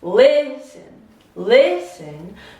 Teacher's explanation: stress is before the final look at this listen listen so the stress is on the first syllable not the second syllable